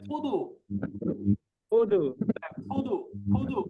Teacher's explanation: ফুদু বললে আপনার ঠোঁট দুটা আলাদা করতেছেন, দুইটা ঠোঁট লাগাই বলেন ফুদু